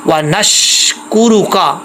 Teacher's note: شین پہ آواز بھی جم جائے گی، سیٹی ضرور آئے گی، ایک سیٹی کی طرح جو ہے وہ آواز آئے گی.